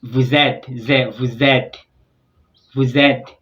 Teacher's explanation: vous ends with an S, and et begins with E. So S and E, they join together and form a readable syllable, which is vous êtes, vous êtes, vous êtes.